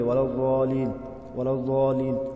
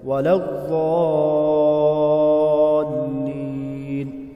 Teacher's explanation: وَلَضَّالِّينَ یہاں پر بھی خیال رکھیں، لام کی تشدید کو سختی سے ادا کریں گے۔ وَلَضَّالِّينَ اس طرح نہیں پڑھیں گے، وَلَضَّالِينَ وَلَضَّالِينَ لام کو سختی سے ادا کریں گے۔